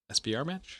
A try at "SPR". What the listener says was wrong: SPR. You automatically go to SBR. No, you said SBR.